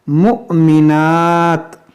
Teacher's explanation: یہاں پر حمزہ ساکنہ ہے, اس کو جھٹکا دے کر پڑھیں گے